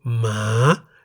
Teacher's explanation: Once again, the single syllable in the word Ma is a live syllable because it ends with a long vowel sara-a. Ma is also in the rising tone